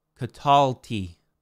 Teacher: Notice the accent changes. It goes to penultima.